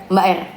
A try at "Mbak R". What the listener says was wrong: Tapi kayak tetap kelihatan, tapi tetap kayak kedengeran cadel, kenapa ya?